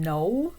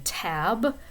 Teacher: tapping the tip of your tongue against that ridged area of the roof of your mouth, and that blocks or constricts the airflow. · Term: alveolar sound